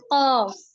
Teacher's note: জিহ্বার গোড়া তার বরাবর উপরের তালুর সঙ্গে লাগিয়ে উচ্চারিত হয় কফ